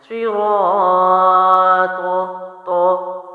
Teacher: طا پر میں نے آخر میں قلقلہ کیا، کیونکہ طا حروف قلقلہ میں سے ہے، باؤنس کرتے ہیں